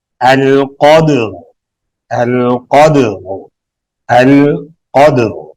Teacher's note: اب یہاں پہ دیکھیں، را ساکن، ما قبل ساکن، ما قبل مفتوح موٹا پڑھیں گے، القدر، القدر، القدر. دال پہ قلقلہ کرتے ہوئے را کو موٹا پڑھیں گے ساکن حالت میں